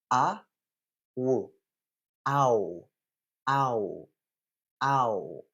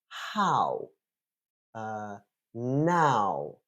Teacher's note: Ow is a diphthong, so it's two vowel sounds following each other. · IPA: /aʊ/